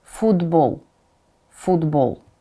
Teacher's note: You see, it's D instead of T.